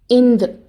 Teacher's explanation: காற்று வாய் வழியாக வராமல் மூக்கு வழியாக வெளியேறும். இது மூக்கொலி.